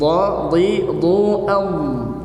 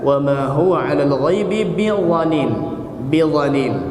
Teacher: Huruf dha diucapkan dari ujung lidah yang ditempelkan di ujung gigi seri atas, posisi belakang lidah diangkat untuk menebalkannya.